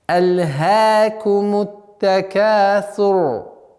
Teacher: Вот здесь правило ра. Буква ра в данном случае огласовка аннулируется, переходит в сукун, и она произносится твердо, так как впереди стоящий звук с огласовкой дамма.